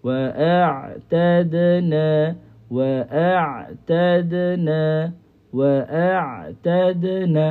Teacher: Makhraj dia di tengah halkum. So kita kena pastikan yang berfungsi masa tunya ialah masa kita nak sebut huruf ain ni yang berfungsi adalah halqulah bukannya lidah.